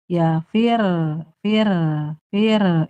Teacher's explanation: naber itu sedikit meninggikan intonasi kayak ya fir vir fir fir itu ketika bertasydid itu huruf-huruf ketika bertasydid dibaca naber sedikit intonasinya di ee naikin kecuali huruf qalqalah sama huruf ghunah.